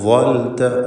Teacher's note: ളാഇന് തഫ്ഖീം കൊടുക്കുക. ഇസ്തിഅലാഇൻ്റെ ഹർഫാണ്.